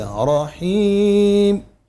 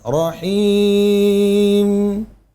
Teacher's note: ہونٹ بند کر کے میم کو تھوڑی ساؤنڈ استمرار رکھنا ہے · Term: غنہ آنی